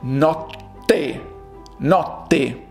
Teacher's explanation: in the middle there are two strong T's